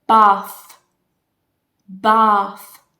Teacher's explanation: But part 1 with this sound is a th. My tongue comes out apart from my teeth. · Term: th sound